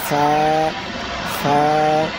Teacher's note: নিচের ঠোঁটের পেট সামনের উপরের দুই দাঁতের আগার সঙ্গে লাগাইয়া উচ্চারণ হয় ফা